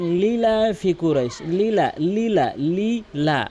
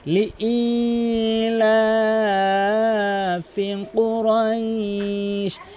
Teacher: দেখুন এখানে অধিকাংশ লোক লীলা ফিকুরাইশ, লীলা লীলা লীলা মাঝখানে কিন্তু ইয়ার উচ্চারণ বাদ দিয়ে ফেলে। এখানে ইয়ার উচ্চারণ তো করতেই হবে এবং একালিফ টেনে পড়তে হবে। লি ই হামজা ইয়াজের ই একালিফ টেনে পড়তে হবে।